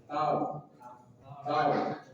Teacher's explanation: Ro maknya ujung lidah bertemu dengan bisi dua gigi dari atas. R ingat ra punya sifat takrir getaran R tetapi tidak boleh lebih dari sekali. Maka tahan ta tar bukan tar t tahan dan sampai dia berlebihan. · ro punya sifat takrir, getaran tetapi tidak boleh lebih dari sekali